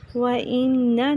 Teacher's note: نون مشدد غنہ کریں گے لیکن لمبا نہیں کرنا